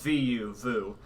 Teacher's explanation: With the woo syllable, you don't really get that bottom lip curled in versus the vu syllable. If you think vu, you have that little bit of that curvage of the bottom lip.